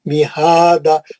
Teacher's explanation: हा पे खड़ा जबर है, 2 हरकत। दा में क्या करें आप, एक जबर गिरा के मध्यस्थली करके रुक दिए, मिहादा।